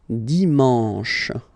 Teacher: You get the sh, and then an, en